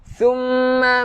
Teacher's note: mim yang bersabdu kita kena dengungkan dua harokat